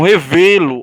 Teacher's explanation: Ó, o V sai mais forte. Se sai mais forte é sílaba tônica.